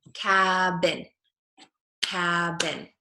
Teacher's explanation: my lips come together for the B in the middle of the word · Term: B sound